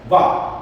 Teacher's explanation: इसका दंत और ओष्ठ दोनों से दंतोष्ठ होगा